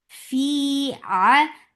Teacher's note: give hams in fa, and then make it two counts long, and hams is flow of breath.